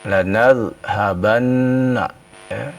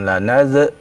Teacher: Huruf zal bukan huruf qalqalah ya. Jadi jangan diqalqalahkan ya.